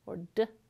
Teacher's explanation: Move your tongue to the ridge above and behind your top teeth and make a [t] or [d]. These are alveolar sounds.